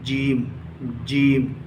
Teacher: जीम का मखरज है जबान का दरमियानी हिस्सा और ऊपर का तालु · جیم کا مخرج ہے زبان کا درمیانی حصہ اور اوپر کا تالو